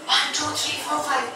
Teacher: This breathy voice, 1, 2, 3, 4, 5, is a very common problem we face because of unilateral vocal fold paralysis. So one vocal fold is not moving, the other one is, but there's a huge gap, so a lot of air leak is taking place